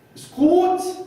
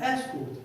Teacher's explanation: instead of stressing on the first syllable, I put the stress on the second syllable